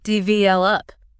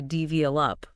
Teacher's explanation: with the stress on the middle syllable